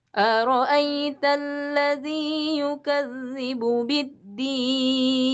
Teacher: datar awalnya ya, jangan langsung tinggi, nanti ujungnya tinggi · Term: irama